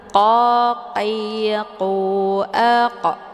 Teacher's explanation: Kemudian qa ini dibaca tebal karena qaf ini posisinya di pangkal lidah. Jadi cara bacanya itu posisi pangkal lidah menempel di langit yang lunak